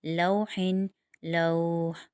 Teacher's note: یہاں پر ہم وقف کی صورت میں 2 الف کی مقدار کھینچیں گے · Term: مد عارض لین وقفی